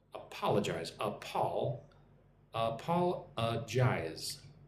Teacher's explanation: Emphasis on the second syllable.